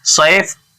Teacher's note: والصيف، یہاں بھی حروف شمسی ہے صاد اس لیے الف لام نہیں پڑھا جا رہا ہے. صیف یا ساکن سے پہلے زبر ہے اس لیے یا لین ہو رہا ہے